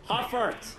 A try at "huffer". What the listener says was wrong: It sounds like you're saying huppet with your terrible American